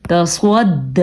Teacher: دال کھڑی زبر دا تصواد. سواد پر اور کھڑی زبر کو کھینچ کے پڑھنا ہے